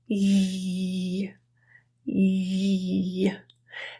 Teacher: think about what your tongue position is when you say e the ye sound involves that middle of the tongue going higher even almost to the point where it's close to touching and creating a bit of a friction sound ye so think about an e sound with a higher tenseness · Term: Y sound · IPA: /j/